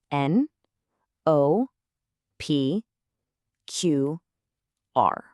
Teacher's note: that rounded O followed immediately by the sharp pop of the P